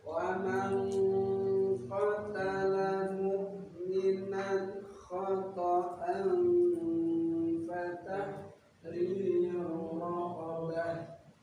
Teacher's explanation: ketika membunyikan ikhfa-nya samarnya lebih banyak daripada bunyi gunah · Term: Ikhfa ab'ad